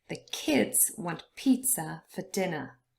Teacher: pizza and dinner both consist of two syllables but only the first one is stressed